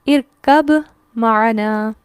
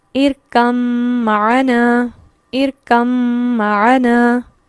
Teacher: ارکب ہم قلقلہ کرنا چاہیں گے اور معنا الگ سے پڑھیں گے، جبکہ ہم نے کیا پڑھا کہ یہاں پر ادغام متجانسین ہے اور اس میں بھی تام ہے، تو با یہاں پر بالکل بھی نہیں پڑھا جائے گا